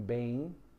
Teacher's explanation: forma no final de uma palavra um ditongo, como em bem, que aí você tem um som de i fraco